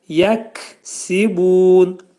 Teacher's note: Kəf hərfinin məxrəci dilçəyin axırındadır.